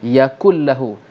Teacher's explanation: Idgham tu masuk, tinggal bunyi lam sahaja. Yakullahu. Secara sebutan, seolah-olah kaf bertemu dengan lam secara sebutan. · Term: idgham bila gunnah